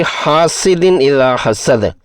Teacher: ہا پر زبر کے بعد الف ہے، الف مدہ ہے، 2 حرکات کی مد اصلی ہوگی